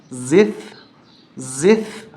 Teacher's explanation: زا پہ سیٹی کی آواز آتی ہے، زبان اندر رہتی ہے، تو ان دونوں کو ملاتے ہوئے اس کا بھی لحاظ رکھیں گے، زبان کو اندر رکھیں گے اور یہاں پر زبان کو باہر نکالیں گے۔